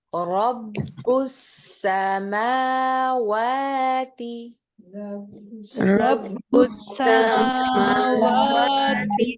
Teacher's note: میم اور واو ان دونوں کے اوپر کھڑی زبر ہے، اس لیے ان دونوں کو دو دو حرکات تک ہم لمبا کر کے پڑھیں گے۔ ان میں سے کسی ایک کو زبر کے ساتھ آپ نے نہیں پڑھنا، عموماً یہی غلطی ہوتی ہے کہ ایک کو زبر کے ساتھ اور ایک کو کھڑی زبر کے ساتھ پڑھا جاتا ہے۔